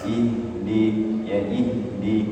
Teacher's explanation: ya tapi lebih banyak kita jumpai itu kasrah ih kemudian ada ha sukun makhrajnya sama dengan Hamzah yaitu di aqsal halqi pangkal tenggorokan atau tenggorokan paling bawah yang paling jauh dari mulut ya ihdi tapi tidak boleh terlampau